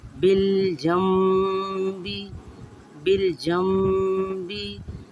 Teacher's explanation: We will stay for a short while on meem, and then we will say ba.